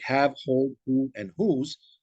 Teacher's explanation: Additionally, there's one consonant sound that is produced without the active use of the tongue, and that the H sound found in words like have, hold, who, and whose. This sound is described as a voiceless glottal sound.